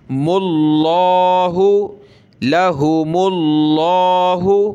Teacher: لفظ اللہ سے پہلے میم پر پیش تو موٹا کریں گے